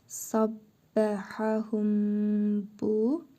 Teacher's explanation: Mimin ihvası qaydasıdır. Mim hərfini burnumuzda tələffüz edərək bir əlif miqdarı uzadırıq və bə hərfini birləşdirərək oxuyuruq.